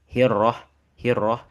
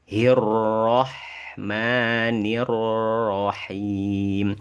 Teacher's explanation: Enggak putus dan ngalir suaranya sedikit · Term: sifat tawasut